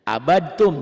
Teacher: Dal mati ketemu tak, maka dal matinya nggak dibaca tuh.